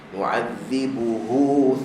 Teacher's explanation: bunyi ha dia kemas, masya-Allah. Sebab ramai orang dia hilangkan bunyi ha belakang tu.